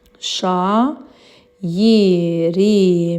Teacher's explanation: Çünki burda a ilə i-in arasına y artırılır. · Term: səs artımı